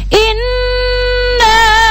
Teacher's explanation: ketika tadi kalian membaca inna, nonnya itu didengungkan karena dia adalah bacaan hunna